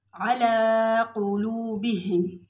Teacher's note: अला लाम पे खड़ा ज़बर है, थोड़ा सा खींच के पढ़ेंगे।